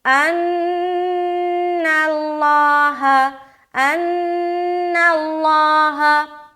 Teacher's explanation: اس کے بعد ان اللہ، ان میں نون مشدد کا غنہ، پھر نون کو لام سے ملا دیا، نَاللَّہ، لفظ اللہ کا لام کو موٹا رکھیں گے · ان میں نون مشدد کا غنہ، پھر نون کو لام سے ملا دیا، نَاللَّہ، لفظ اللہ کا لام کو موٹا رکھیں گے، ان اللہ، ان اللہ.